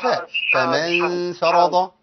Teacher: والغنه عندنا مرققه لان داخلين على ايه على ف